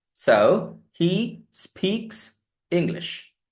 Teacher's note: He, speak, k, voiceless again. So when I add that s, that becomes s, but not z.